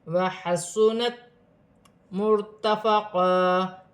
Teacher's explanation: وحسنت مرتفقا، را ساکن ہے، را سے پہلے پیش کی حرکت ہے، را موٹی پڑھی جائے گی.